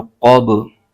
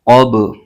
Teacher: قاف پر زبر ہے اور با ساکن حرف ہے اور با حروف قلقلہ میں سے ہے، اس میں قلقلہ بھی ہوگا، یعنی آواز جنبش کے ساتھ لوٹتی ہوئی محسوس ہوگی